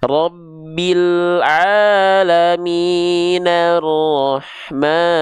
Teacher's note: hamzah wasol ini kalau kita baca disambung dengan kalimat sebelumnya, hamzah wasol ini tidak dibaca. Misalnya nih, dari akhir ayat kedua ke ayat ketiganya dia nggak berhenti, maka hamzah wasolnya itu nggak dibaca.